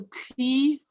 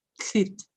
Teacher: kli, high tone, becomes klit, low tone. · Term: ter insertion